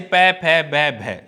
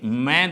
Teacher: नय का उच्चारण दंत प्लस नाक से होता है। ऐसे पै फै बै भै ये 4 ध्वनियाँ ओठों से बोली जाती हैं, लेकिन मैं ध्वनि ओष्ठ प्लस नाक से बोली जाती है